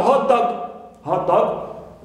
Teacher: as one word, it's a compound noun. I stress hot, first element.